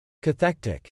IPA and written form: (kəˈθɛktɪk) (Cathectic)